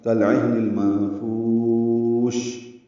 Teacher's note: عین وسط حلق سے ادا کریں گے، ہا سے ملائیں گے، ہا ساکن ہے، اس پہ ہمس کریں گے، یعنی سانس جاری رکھیں گے. نون کو المنفوش کے لام سے ملانا ہے، اظہار قمری ہے، لام ساکن کو ظاہر کر کے پڑھنا ہے. · نون کو المنفوش کے لام سے ملانا ہے، اظہار قمری ہے، لام ساکن کو ظاہر کر کے پڑھنا ہے. اور منفوش میں نون ساکن، اس کے بعد فا کی وجہ سے اخفا ہے، فا کو لمبا کریں گے. شین میں تفشی اور ہمس ہوگا وقفاً.